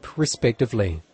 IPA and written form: rɪˋspɛktɪvlɪ (respectively)